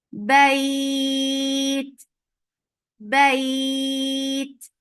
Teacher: Because of the waqf, you are giving sukoon here, and it brings hams in ta now. Ta with sukoon is always with hams, and hams is flow of breath. This temporary sukoon has turned this 2 counts long vowel, which was lean now, so it has changed into 4.